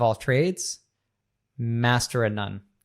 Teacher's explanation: off very often gets reduced to just v or schwa sound